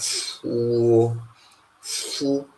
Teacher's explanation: Once again, this is not a diphthong in Tyap. This is a long consonant sound. This is a long labialized fa sound in Tyap